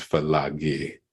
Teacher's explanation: the vowel before the last consonant becomes a